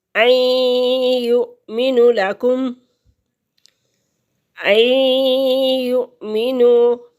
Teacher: ان یؤمنوا لکم، ان یؤمنوا، یا مشدد ہے، 2 دفعہ پڑھی جائے گی اور حمزہ ساکن ہے، اسے جھٹکے سے پڑھیں گے۔